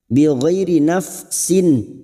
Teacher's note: kasrah tanwin bertemu hamzah idhar halqi dibaca jelas tanpa mendengung